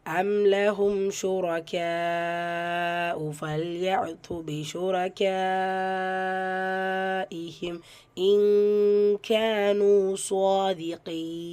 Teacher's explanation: கேஃபில் மத்து முத்தசில் 5 ஹரக்கத்தளவு நீட்டம் கொடுத்து ஓதணும்